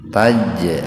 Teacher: qalqalah sugro, huruf jim sukun di tengah-tengah kata